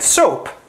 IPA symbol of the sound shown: o